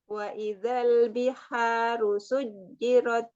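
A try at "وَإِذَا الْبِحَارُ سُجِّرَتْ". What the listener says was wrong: Coba idal tipis lagi, jangan naik.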